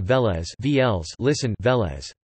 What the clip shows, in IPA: ˈvɛːlɛs